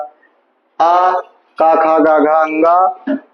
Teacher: ख ग घ अंग और विसर्ग भी जो है ये कंठ से निकलता है